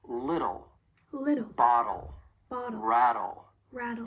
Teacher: A flap T may also occur when the T comes before a dark L